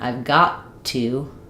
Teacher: I've got to. We do have the stop and the break from this T and then the release on the next T. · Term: stop t